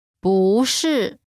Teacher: when 不 is followed by a fourth tone, its tone changes from the fourth tone to the second tone.